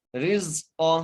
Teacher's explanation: علیہ رزق، را کو زا سے ملانا ہے، اور زا کو جو ہے سیٹی سے پڑھنا ہے، قاف کو موٹا کر کے پڑھنا ہے، اور یہاں پہ وقف کر سکتے ہیں.